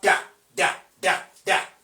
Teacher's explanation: That is voiced alveolar plosive.